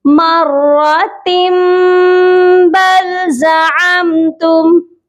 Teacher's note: اس تنوین کی جو وائس ہوتی ہے، جو ساؤنڈ ہوتا ہے، اس کو ہم میم میں چینج کر دیتے ہیں، جس کو کہتے ہیں اقلاب۔